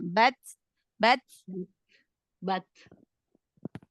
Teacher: Bat hamznya sedikit aja renggangin makhrajnya sambil dihembuskan nafasnya